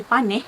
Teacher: Perkataan panas berubah menjadi paneh di mana vokal terbuka depan a bertukar menjadi vokal separa terbuka depan e selepas konsonan nasal n